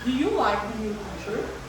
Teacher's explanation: There's a rising intonation. The tone is going up.